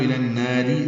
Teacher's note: النار اگر ملانا ہے تو الناری، را باریک ہوگا